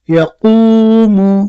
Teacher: ساکن سے پہلے پیش ایا ہو اس لیے وا مدہ ہوگا وا مدہ کو ایک الف کے برابر کھینچ کر پڑھے